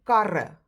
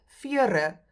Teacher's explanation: we just make that one r sound in the middle, whether there's two or one of the r's in the middle